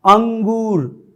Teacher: अनुस्वार में सिर्फ हवा नाक से बाहर निकलती है उच्चारण करने में, जबकि अनुनासिक के उच्चारण में हवा नाक और मुंह दोनों से बाहर निकलती है